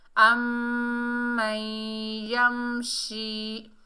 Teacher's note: शीन को अदा करते वक्त हमारी आवाज़ फैलती हुई महसूस होगी।